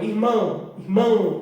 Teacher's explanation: Praticamente você não ouve o O. Então é uma semivogal.